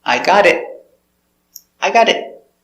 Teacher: the final T is a stop T, so you don't hear t.